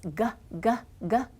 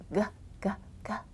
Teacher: One of the sounds the letter G makes is g, g, g. And the sound comes from way back in your throat.